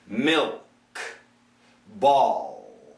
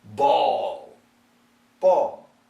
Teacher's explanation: The L can be made inside the mouth. The dark L is tucked in tight. The light L is very lightly touching the alveolar ridge.